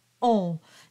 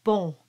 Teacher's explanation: So normally the word bon is pronounced as a nasal, very closed O.